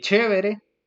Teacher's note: pasa el aire rozando la letra e el fonema F zs el rasgo africado que se produce una oclusión y después una fricación